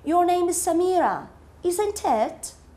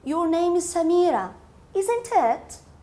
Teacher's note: the tag question has a rising intonation